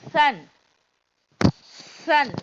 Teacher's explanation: சாவுடைய உச்சரிப்பு எங்க இருந்து வரும்? நுனி நாக்குல இருந்து இந்த சவுண்டு வரணும்.